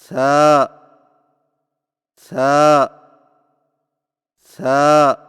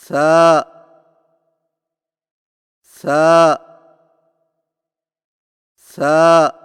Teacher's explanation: जुबान की नोक को सामने वाले ऊपर के दो दांतों के अंदरूनी किनारों से नरमी से लगाकर बारीक आवाज में पढ़े · ثا کی ادائیگی میں زبان کی نوک کو سامنے والے اوپر کے دو دانتوں کے اندرونی کناروں سے نرمی سے لگا کر باریک آواز میں پڑھیں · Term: था